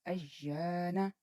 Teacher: یہاں تھوڑا سا لمبا کریں گے، حروف مدہ میں سے الف آیا ہے